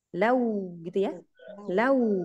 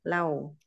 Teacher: Kemudian bacaan lin wawu jangan lau tapi lau. Jadi wawunya itu bunyinya vokal u. Jangan w.